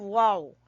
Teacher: वाव मुंह खोल के नहीं कहना होता, वाव, ये होंठ बंद हो जाते हैं साइडों से